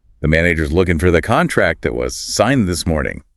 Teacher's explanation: And all the little function words in between get squeezed. Is, for, the, that was.